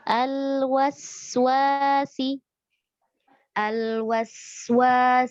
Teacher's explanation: sin lebih panjang dari lam sukun. Ya, jadi panjangkan suara mengalirnya.